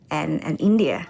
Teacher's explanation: she uses a rising intonation to express the afterthought India